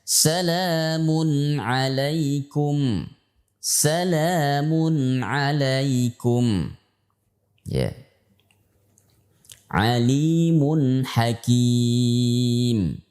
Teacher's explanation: ketika mengucapkan mim dan Nun ini kita mengucapkan dari dua sisi sisi pertama dari mahroj asal daripada huruf tersebut Sisi yang kedua adalah harus diarahkan ke hidung